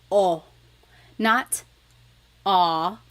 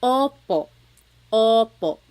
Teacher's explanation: Sometimes I think of it like having a ball in your mouth. Your tongue gets kind of pushed back and down a little bit, and the inside of your mouth is open and wide. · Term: letter O